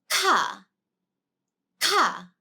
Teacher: It's actually a really, really strong sound. So air comes out. Ka, all right?